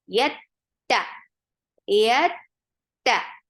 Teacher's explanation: Ta is very sharp here. The sound cuts off very nicely. Yet, no humps whatsoever.